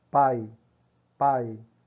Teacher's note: Você vê que o I vai morrendo, né? Você dá aquela força, aquele impacto no PA, né? Que é a consoante mais a vogal tônica, e você tem o I aí como semivogal, uma vogal átona, fraca, certo? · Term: ditongo decrescente